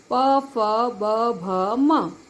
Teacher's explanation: ओष्ठ मतलब ये लिप्स, इससे आता है हमारा प वर्ग पूरा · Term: ओष्ठ्य